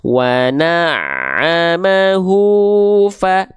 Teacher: Nadanya nggak ngayun tapi tetap 2 kali ayun